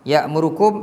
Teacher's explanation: Jadi semua mim yang mati, tak ada tanda mati ke atas, mim tu kena dengungan macam ni. · Kita kena dengung kan. Ikhfa syafawi ni dengung dalam kadar 2 harakat. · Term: mim mati